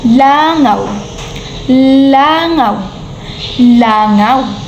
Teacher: ang ponema o ang letrang L ay pagilid sa paraan ng artikulasyon